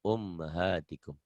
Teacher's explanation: mimnya gunnah, tapi jangan kelamaan